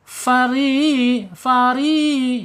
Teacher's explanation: ro kasrah menghadapi ya sukun ini mad thbi'i ya panjangnya dua harakat